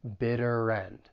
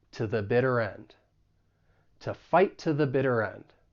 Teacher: we can link the final consonant sound in bitter with the beginning vowel sound in end.